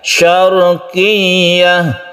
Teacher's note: tasydid ya ini ditekan saja, tak perlu dipanjangkan.